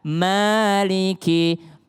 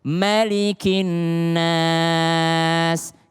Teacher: Kalau Hafiz an Asim mimnya itu 2 harokat